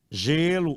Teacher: o timbre é fechado